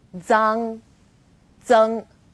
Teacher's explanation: For example, Z as in zang or zeng. Its pronunciation is quite similar to the DS sound in English, like cards, but you need to move the tip of your tongue closer to the back of your teeth.